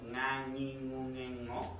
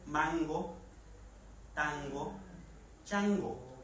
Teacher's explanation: qué tal la velar nasal Sonora